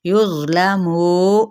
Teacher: युज़ नरमी के साथ भी और पुर भी पढ़ा जाएगा यानी मोटा करके, जिसको तफ़ख़ीम भी कहते हैं अरबिक में। युज़लमू, मुँह कहना, मुँह नहीं, नाक में से आवाज़